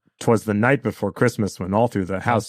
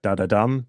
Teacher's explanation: it's two unstressed syllables and a stressed one so it's da da da da dum that's like a da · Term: anopest